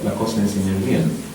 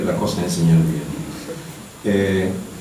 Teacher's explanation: No dice la cosa es enseñar bien, no hay ese, no hay aspiración, no hay nada, es simplemente la cosa es enseñar bien.